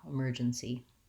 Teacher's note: Oftentimes when the E sound is in an unstressed syllable at the end, you might have a tendency to make the sound too lax and it sounds more like a S or a S, emergency, and you want to make sure that you have that tense high front E vowel